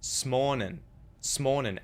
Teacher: And he used the syllabic N at the end of the word.